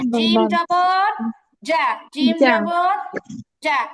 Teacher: জিমের উচ্চারণ হচ্ছে জিহ্বার মাঝখান উপরে তালুর সাথে লাগবে